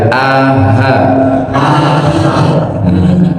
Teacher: Jadi dari pangkal tenggorokan sini hurufnya adalah hamzah dengan ha